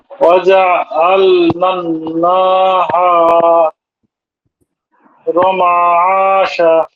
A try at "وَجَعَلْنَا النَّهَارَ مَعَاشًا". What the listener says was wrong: হ্যাঁ সবাই ঠিক আছে, শুধু নাতে একটু টান হয়ে যাচ্ছে, না হা এরকম হচ্ছে, এরকম হবে না, নাহা নাহার